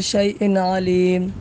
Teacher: شیء آخر میں 2 زیر ہے تو تنوین ہے، اس کے بعد اگلے کلمے میں علیم میں شروع میں عین آ رہا ہے، حروف حلقی میں سے عین بھی ہے، تو اس لیے یہاں پر ہم ظاہر کر کے بلا غنہ پڑھیں گے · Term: اظہار حلقی